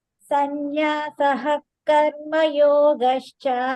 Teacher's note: When the Visarga is coming in between, you don't have to say ha there.